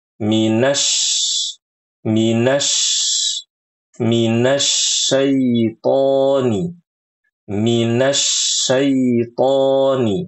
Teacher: jangan diubah huruf shinnya menjadi sin.